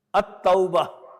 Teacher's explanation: it is Shamsiya because Ta is having tashdeed and lam is not being pronounced